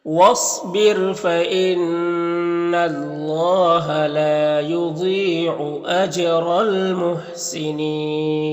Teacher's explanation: यहाँ पर अलिफ लाम हुरूफ़ कमरी मीम के शुरू में तो लाम को पढ़ेंगे, अलिफ को नहीं पढ़ेंगे। यहाँ पर वक्फ करेंगे तो मद्दे आरिज़ वक्फ़ी होगा